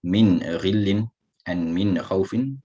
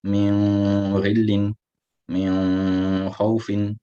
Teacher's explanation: Similarly, in min khawfin, read the noon clearly from its makhraj without any extra hunna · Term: ilhar